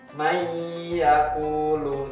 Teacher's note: Jadi langsung masuk ke huruf ya, nunnya tidak terbaca. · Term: idgham bi gunnah